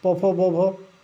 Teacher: प वर्ग का उच्चारण स्थान क्या है? प वर्ग ओष्ठ है